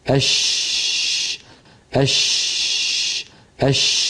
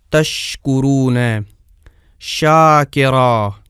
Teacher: کھلا رہنے کا مطلب یہ ہے کہ شین کی ادائیگی میں اس کا مخرج بند نہیں ہوتا، جیسے اش، تو اس کی ادائیگی کی جگہ اگرچہ تنگ ہو جاتی ہے لیکن بالکل بند نہیں ہوتی، اور نہ ہی اس کی آواز میں مکمل بندش ہوتی ہے۔